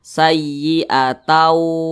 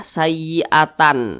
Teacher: ta ini langsung dimasukkan ke huruf wa. Maka dibaca sayyi'atau. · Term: idgham bi gunnah